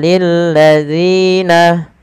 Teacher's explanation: panjangkan Zi sepanjang dua harakat dan hati-hati dalam melafalkannya jangan sampai Terganti dengan huruf Zain